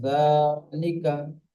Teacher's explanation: জি, এই জালের উপরে খাড়া যাবার আছে, আপনি ইজরা করলেন। জালের উপরে খাড়া যাবারকে একালি পরিমাণ টান দিয়ে পড়তে হয়।